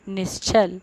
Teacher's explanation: विसर्ग के बाद च है तो इसको आधा श आदेश होकर के बना है शब्द निश्चल